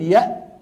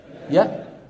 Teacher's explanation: الهمزة تخرج بغلق الوترين الصوتيين في الحنجرة